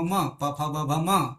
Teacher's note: મ પ ફ બ ભ મ એને બોલીએ ત્યારે હોઠ બંધ કરી દો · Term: ઓષ્ટવર્ણ